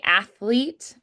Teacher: with the stress on the first syllable athlete